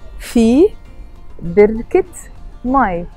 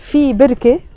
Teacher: I'm pronouncing the T مربوطة of بركة because it's followed by ماي. If it's just في بركة, I don't pronounce the T مربوطة.